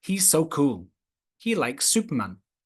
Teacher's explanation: when you get two s sounds he's so and likes Superman we don't say it twice they come together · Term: gemination